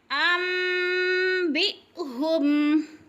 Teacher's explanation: بی حمزہ کو جھٹکا دے کر پڑھیں گے